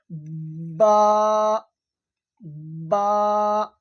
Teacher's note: বা এই দুই ঠোটের শুকন অংশ থেকে উচ্চারণ হয়